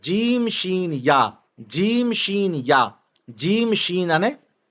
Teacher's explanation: जबान और तालु के दरमियान, जबान और तालु के दरमियान से अदा होते हैं। जबान है विच जो भाग, जबान जो विच जो भाग, अने तालु पर विच जो भाग यहाँ थी अदा थिए तो।